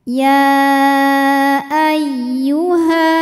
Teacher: Ya masuk ke ya tasydid ini dibaca dengan naber. Jadi kita tinggikan atau kita naikkan intonasi suara kita, tidak perlu ditahan. · Mad tabi'inya adalah fathah panjang pada kata ya, hamzahnya adalah a pada kata kedua yaitu ayyuha. Maka ya dipanjangkan, boleh 4, boleh 5 harokat. Jadi ini tuh walaupun penulisan antara mad tabi'i dengan hamzahnya disatukan, tetapi secara makna terpisah. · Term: mad jaiz munfasil